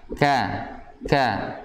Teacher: ada sifat hamas yang mengalir udara. Jadi jangan sampai hilang.